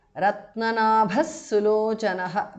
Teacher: Visarga changes to su there.